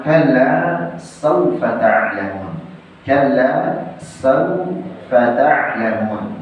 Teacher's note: Bil 'ain, tidak menggunakan hamzah.